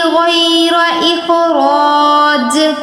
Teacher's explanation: غین اور را ان دونوں پر تفخیم، خا پر تفخیم، جیم پر قلقلہ